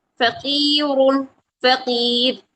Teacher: وقف کی صورت میں یہ را باریک ہوگی اور وصل کی صورت میں یہ را موٹی ہوگی،